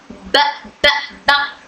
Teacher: ब जोर से बोल लें बलने पर हवा का हल्का प्रेशर महसूस होता है। ब इसमें होठ टाइटली बंद हो रहे हैं और इसके अंदर एक सिफत शिद्दा भी है। इसकी आवाज मखरज में यानी होठों में रुक जाती है।